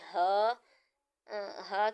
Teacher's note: اس کے بعد آتا ہے ہا، ہا کے ساتھ الف مدہ کا قاعدہ ہو رہا ہے، اس کو 1 ٹائم دراز کریں گے، یہ حروف حلقیہ ہے، حلق کے جو سب سے نیچے والا جہاں سے حلق شروع ہو رہا ہوتا ہے وہاں سے ادا ہوگا